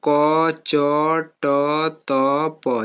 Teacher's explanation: पहला वाला का होता है अल्पप्राण। तो अघोष भी है और अल्पप्राण यह होते हैं पूरे